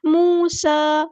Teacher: سین کی سیٹی واضح کریں گے